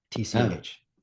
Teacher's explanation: why do the Irish pronounce T in a funny way by adding the sound CH after them?